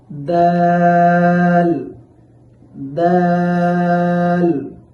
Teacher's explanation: এই দাল হরফটি উচ্চারণের সময় সামনের উপরের দুই দাঁতের গোড়ার সাথে জিহ্বার আগা লাগাইতে হবে। সেখান থেকে দাল হরফটি উচ্চারিত হবে।